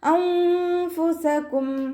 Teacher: നൂൻ സാക്കിനയെ മറച്ച് വെച്ചിട്ട് മണിച്ചോതി കൊടുക്കുക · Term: ഇഖ്ഫായിൻ്റെ